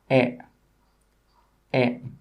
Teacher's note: the front of the mouth at about the Middle Air and my tongue is in the middle of my mouth and it's not high and it's not low